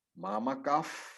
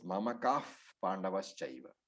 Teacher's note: when the Visarga is followed by P, F, that particular class of alphabets, the Visarga turns into F